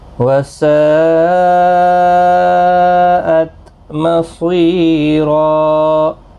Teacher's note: یہاں پر مد متصل ہے، چار الف کی مقدار کے برابر کھینچ کر پڑھیں گے۔